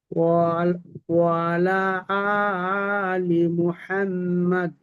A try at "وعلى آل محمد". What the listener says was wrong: وعلى، এটা একটু লম্বা করবেন বেশি। وعلى